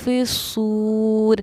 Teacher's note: واو ساکن سے پہلے زبر تو پھر واو حروف لین، اور اس کو بھی ہم نرم آواز کے ساتھ جلدی ادا کریں گے